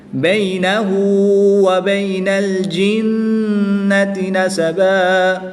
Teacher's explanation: نون مشدد میں غنہ کر کے پڑھیں گے، نون کو لام کے ساتھ ملا کے پڑھیں گے